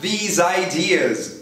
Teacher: E você vai ter que mandar these ideas ligando com z.